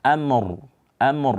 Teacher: Amr diwakafkan dengan ro tafkhim